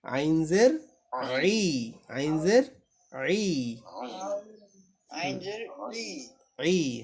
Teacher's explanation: আচ্ছা তাহলে আমরা সদ পড়লাম, কোথায় পড়লাম না, জজের জি, এরপরে আইন গলার ভেতর থেকে চাপ দিয়ে পড়তে হবে